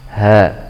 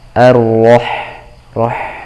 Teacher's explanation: Kalau ha adanya di pangkal tenggorokan, ha, adapun ha adanya di tengah tenggorokan, ar-roh, roh.